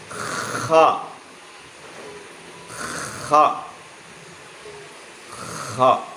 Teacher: harus ada bunyi ngoroknya, ya, tetapi jangan terlalu ngorok, ya, untuk membedakan, ya, dengan ha tadi atau dengan yang ha besar. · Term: huruf kha